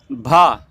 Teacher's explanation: स्पर्श घोष महाप्राण और ओष्ठ व्यंजन ध्वनि भा कहलाती है।